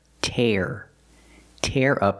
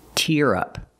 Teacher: the first phrasal verb is tear up we use the air sound like hair and Chair Tear tear up the paper and the second one is tear we use the ear sound like hear and beer